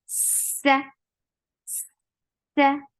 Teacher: Seen has very snaky sound. For fatha, open your jaws. The sound is short. S. Look, before fatha, you are creating that snaky sound.